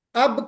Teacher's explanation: تھوڑا سا اندر کا جو حصہ ہے وہاں سے ادا ہوگا۔ تو دونوں ہونٹوں کے تر حصے سے با ادا ہوگا، جی۔ اس کو جہاں سے تری ہوتی اس کو ہم بحری کہتے ہیں، بحر مانے سمندر۔